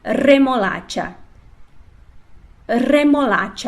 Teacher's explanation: ele deverá ser pronunciado forte como alguns gaúchos pronunciam e a língua vibra no céu da boca mais para perto dos dentes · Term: r duplo